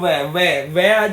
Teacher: जब आप बोलेंगे तो आपके दांत नीचे के होठ से टकराएंगे